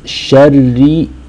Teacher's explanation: Ra over here is light because it has a kasra.